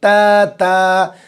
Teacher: زبان کی نوک اور اوپر کے دانتوں کی جڑ